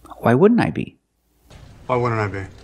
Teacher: the NT in wouldn't is between vowels, so you don't really hear the T. Not why wouldn't I be, but why wouldn't I be?